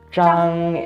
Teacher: it's a first tone which is kind of a flat pitch